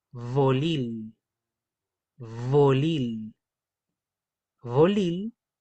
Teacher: Es vibrante, de hecho es sonora, no es sorda como la F.